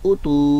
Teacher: ता की पेश के आगे वाव मद्दा है और हमजा की पेश सिर्फ खाली हरकत है